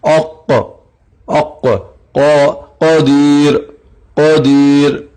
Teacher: دراصل اس کو عام زبان میں کہا جائے تو پرجیب جو ہم کہتے ہیں، چھوٹی جیب جو ہے ہماری جیب کے نیچے والا حصہ، تو اس پرجیب کے نیچے سے زبان حرف قاف ادا ہوگا، اوق اوق۔ یاد رہے جس وقت قاف ادا ہوگا تو آواز ٹکرائے گی اور آواز موٹی بھی تفخیم بھی ہوگی۔